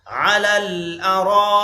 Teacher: را پر مد ہے اس کو کھینچیں گے اور یہ مد لازم ہے.